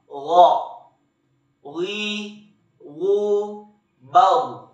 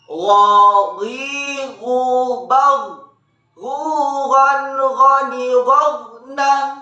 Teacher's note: Huruf ini keluar dari tenggorokan yang terdekat dari rongga mulut kita. Diucapkan dengan lembut suaranya tanpa mengalir udara.